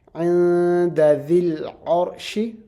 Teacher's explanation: dal is one of the ikhfa letters, and that's why we'll do an ikhfa on the noon sakin.